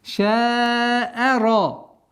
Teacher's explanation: Здесь ра твердая, а все остальные звуки мягкие.